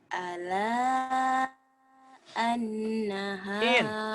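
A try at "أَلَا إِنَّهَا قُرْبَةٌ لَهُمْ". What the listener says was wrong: In. Bukan an, in. Barisnya di bawah.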